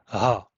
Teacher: voiced H sound as we hear it in Czech for example